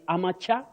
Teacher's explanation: You can say amateur, yes, with the stress at the onset or the first syllable if you like.